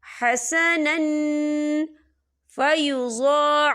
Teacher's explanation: हम यहाँ इक्फ़ा करेंगे, तनवीन की आवाज़ को नाक में छुपाएंगे।